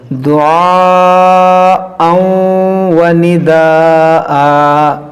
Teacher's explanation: تنوین کے بعد واو ہے، یہاں پر ادغام کریں گے